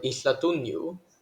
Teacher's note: the stress falls on the second-to-last syllable, since that syllable has two mora and the last one has one.